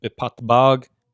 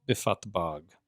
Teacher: And so fatbag is a construct. The pei, of course, is spirantized because of the prepositional suffix with the vowel.